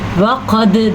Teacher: وقد اگر واقد کیا تو غلط کر دیا، واو کو لمبا کر کے وقد اتنا صحیح، واو زبر وقد. دال کے اوپر کلکلا ہو رہا ہے